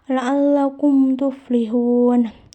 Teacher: Jadi huruf izhar safawi itu ada 26 kecuali huruf mim dan ba. Cara pengucapannya itu tidak boleh dengung dan huruf mim sukun harus dibaca jelas dan baik. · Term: izhar syafawi